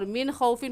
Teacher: من خوفن پر غنہ نہیں کریں گے کیونکہ نون ساکن کے بعد حروف ہلکی میں سے خا آ گیا ہے، اس لیے یہاں پر غنہ نہیں ہوگا.